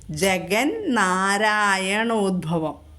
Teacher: തവർഗ്ഗത്തിലെ അനുനാസികം നായാണ് അതുകൊണ്ടാണ് അവിടെ ന ആയി മാറിയത് ജഗൻ എന്ന് വന്നത് ജഗൻ എൻ വന്നു ജഗൻ നാരായണോഭവം കേട്ടോ അപ്പോ അത് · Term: വ്യഞ്ജന സന്ധി